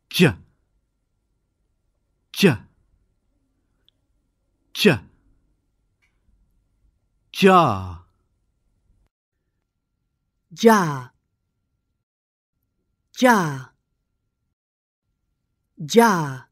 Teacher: placing the tip of your tongue ready for the voiced d, as in dig, and the front of your tongue just behind it for the voiced zh, as in measure, at exactly the same time, and bringing the tongue away sharply. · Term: double-voiced consonant